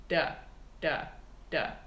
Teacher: it's a really really fast D sound it's a really fast motion of the tongue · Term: flipped R